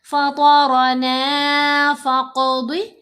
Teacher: یہاں ہم نے موٹا پڑھنا ہے، پر پڑھنا ہے، فطرنا فقض، قاف پر کلکلا کریں گے موٹا پڑھیں گے ، ضاد کو بھی موٹا پڑھنا ہے، یہ حروف مستعلیہ میں